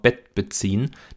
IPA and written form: bɛt̚b̥əˈt͡siːn (Bett beziehen)